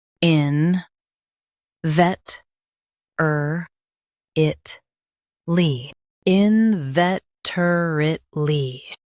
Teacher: Stress vet. Keep er it quick and clear.